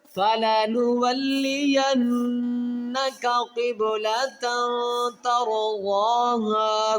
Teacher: یہاں پر جو غنہ ہے اس کو کہتے ہیں نون مشدد غنہ، یعنی کہ نون کے اوپر شد آئے گی تو وہاں پر ہمیشہ نون مشدد غنہ کیا جائے گا